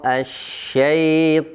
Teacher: Masuk huruf ta, huruf tebal harus dibaca ta.